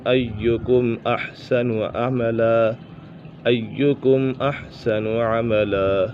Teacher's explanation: یہاں پر اظہار شفوی ہے، میم ساکن کے بعد حرف با اور میم کے علاوہ کوئی بھی حرف آ جائے تو میم ساکن میں اظہار شفوی ہوگا، یعنی غنہ نہیں کریں گے